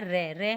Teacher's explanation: उच्चारण करते समय जीभ में दो तीन बार कंपन होता है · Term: पकंप व्यंजन